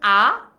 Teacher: আমরা যখন হচ্ছে আ সবচেয়ে বেশি ঠোঁটটা ফাঁক করছে, এই জন্য এটাকে বলা হচ্ছে বিবৃত